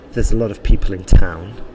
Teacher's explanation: the stress there was probably in people and in town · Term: sentence stress